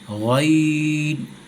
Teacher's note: غین، یہ آخری حلق سے ادا ہوتا ہے، آخری حلق سے غین خا، تو یہ ہے غین، غین۔